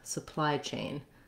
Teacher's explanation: Chain, we have the letter ch, which typically say the sound ch, written like this. And then we have our tense A, make sure you hold your A long enough.